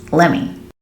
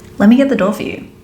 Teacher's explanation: we can shorten by dropping the T sound and just combining the two words so let me becomes let me here's an example let me